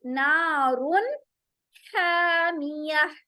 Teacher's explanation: रा मोटा भी होगा, और रा के अंदर जो नून तनवीन है उसके बाद हुरूफ हलकी आ रहा है, तो हम नारुन हामिया, हा, देखिए यहाँ ह था, यहाँ हा है, ह है, ह है, हामिया, ठीक है।